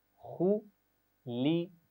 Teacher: یہ خیال رکھیے آوازوں کو مجہول نہیں پڑھنا، یعنی خولقہ نہیں پڑھنا، ٹھیک ہے؟ آپ اس کی بالکل صحیح معروف آواز جسے کہتے ہیں وہ سیکھ چکے ہیں، خُلِقَ، پڑھیے۔